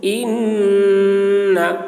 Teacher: नून मुशद्दद, नून में गुन्ना होगा